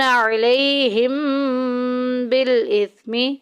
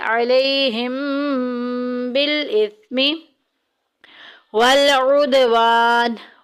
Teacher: علیہم میں دیکھیں میم ساکن کے بعد با آ گیا، اخفاء شفی کا قاعدہ جاری ہو رہا ہے، ہم یہاں پہ غنے کے ساتھ پڑھیں گے